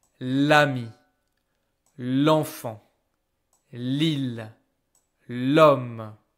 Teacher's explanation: And now I don't hear the gender anymore. I don't hear the le, la anymore. They both transform into l like this.